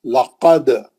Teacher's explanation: لقد, یہ آخری میں ہے, کلمے کے آخری میں ہے. کلمے کے آخری میں رہے تو ذرا بڑا خلخلہ ہوتا ہے, کیونکہ وہاں پہ آپ روک دیتے ہیں, کلمہ کمپلیٹ ہو جاتا.